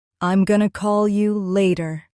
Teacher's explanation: Stress call and later.